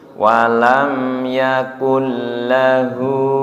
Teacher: hu panjang dua harokat, domanya terbalik, namanya mad silah qasirah nggih.